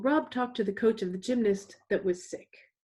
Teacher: That was sick is very short, it's only 3 syllables. It's going to get essentially lumped in with the gymnast that was sick.